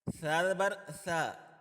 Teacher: ثا کو ادا کرتے ہوئے زبان کو تھوڑا سا باہر نکالنا ہوتا ہے۔ ثا کی جگہ سین نہیں پڑھنا، ورنہ معنی بھی چینج ہو جائے گا۔